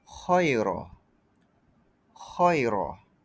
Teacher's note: Ini huruf keluar dengan hembusan nafas. Suara perlahan. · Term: hamsi